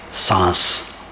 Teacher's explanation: सांस में आधा अनुस्वार का उच्चारण होता है, शांति में पूरा अनुस्वार